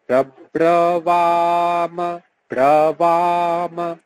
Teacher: প্র যখন উচ্চারণ করবেন দুটো ঠোঁট একসাথে লাগবে, কিন্তু পরে যখন বাম, এখানে কিন্তু দুটো ঠোঁট একসাথে লাগবে না, তখন হচ্ছে উপরের পাটির দাঁত নিচে ঠোঁটে স্পর্শ করবে। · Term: অন্তস্থ ব